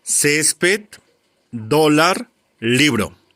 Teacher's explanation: donde recae la mayor fuerza de voz de estas palabras en la penúltima sílaba